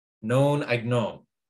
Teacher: that i'd is unstressed and so it gets kind of squished into the known it should take as much time to say known as it